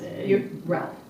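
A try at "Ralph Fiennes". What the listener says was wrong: Yeah, Rafe. Yes, Rafe Fiennes. It is R-A-L-F, but it is pronounced Rafe.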